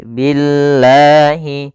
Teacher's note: lafal Allah Jal yang di mana sebelumnya didahul harakat kasr maka di sini lamnya menjadi lam yang tipis lam tipis bukan lam tebal atau kita namakan lam tarqik maka membacanya bukan Billah tapi Billahi